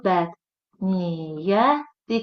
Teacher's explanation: Bilirik ki, iyyət və iyyə hissəcikləri tələffüz zamanı y-nın biri düşür. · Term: səs düşümü